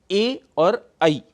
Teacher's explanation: अगला है कंठ तालु, जहां पर कंठ और तालु अर्थात एपिग्लॉटिस और पैलेट, जहां पर एक साथ मिलकर जो ध्वनि बनाते हैं, जो वर्ण बनाते हैं, वो हैं ए और ऐ।